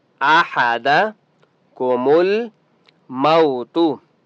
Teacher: वाव लीन है, मीम को लंबा नहीं करेंगे, लीन को लंबा नहीं करते।